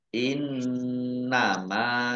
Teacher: Nun tasdid dibaca gunah atau mendengung ditahan dua harakat mim fathah Alif Mad Thobi'i panjang dua harakat